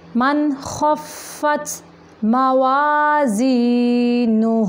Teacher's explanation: وَأَمَّا مَنْ خَفَّتْ، من نہیں کرنا، صرف یہاں پہ نون کو ظاہر کرنا، اظہار کا قاعدہ ہے